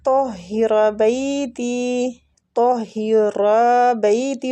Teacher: را کو کھینچیں گے اور را فتح کی وجہ سے پور بھی پڑھا جائے گا